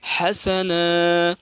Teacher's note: روکنے کی حالت میں دو زبر کو ایک زبر کے ساتھ الف مدہ پڑھیں گے